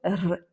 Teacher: Et donc c'est un R roulé, mais il est assez court. Ça va pas être un R très long, ça va être plutôt R, juste un R.